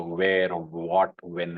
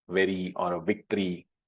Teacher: So those are bilabial, and the words that start with V, like very, etc., very or victory, etc., are labiodental. So that is how you see those two sounds are quite close.